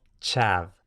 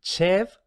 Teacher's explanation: tenemos que la vocal se sigue cerrando un poquito más